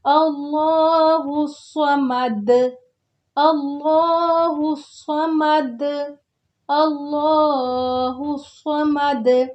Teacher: سواد ہے موٹا کر کے پڑھنا ہے، اس کو باریک سین کی طرح نہیں پڑھنا۔ اللہ نہیں کہیں گے ورنہ سین بن جائے گا۔